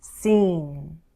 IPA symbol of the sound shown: n